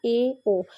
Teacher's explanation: जिन स्वरों के उच्चारण में जो हमारा मुंह है, मुख है, वो आधा बंद ही रहता है। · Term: अर्ध समृद्ध स्वर